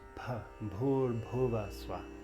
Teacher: the consonants with an H after, you pronounce them with a little puff of air.